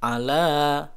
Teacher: sebab ada fathah berdiri pada huruf lam ya huruf selain Hamzah 2 harokat jangan terlalu panjang cukup pakai rumus di ayun aja jadi ala seperti itu ala